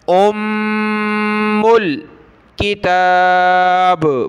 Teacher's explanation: میم کو لام کے ساتھ ملایا تو میم پر یہ تشدید ہے تو غنہ ہوگا، ام الکتاب، با پر قلقلہ ہوگا، کتاب۔